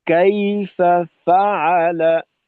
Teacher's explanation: প্রথম ফাকে একটু শিথিলতার সাথে করলাম, অর্থাৎ আওয়াজটাকে একটু নিম্নগামী করলাম। দ্বিতীয় ফার ক্ষেত্রে আওয়াজটাকে একটু ঊর্ধ্বমুখী করে তারপর উচ্চারণটা করলাম, কাইফা ফাআলা, যেন কাইফা কাইফা ফাআলা, ফাআলা كيف فعل জি একটানে না হয়।